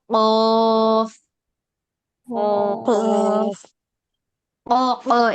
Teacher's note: জিহ্বার গোড়া উপরের তালুর সঙ্গে লাগবে